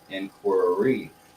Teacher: we kind of double the r sound to push into it